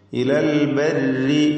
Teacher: البر راين ترقيق കൊടുക്കണം, അതിനെ കസ്റ ഉള്ളതുകൊണ്ട്